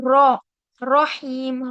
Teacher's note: जबान की जो नोक है वो ऊपर के दांतों के मसूड़ों से लगेगी